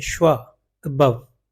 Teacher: फादर में जो ए का तलफ़ुज़ है वो ये साउंड है, आ। अबव में जो ए का तलफ़ुज़ है वो ये साउंड है, श्वा